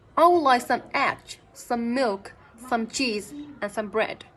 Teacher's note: we would use a falling intonations on bread to say that because we have finished the list